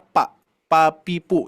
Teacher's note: Pak Pak itu ya jadi pengucapannya dua bibirnya G ya E bibir bawah menempel ke bibir atas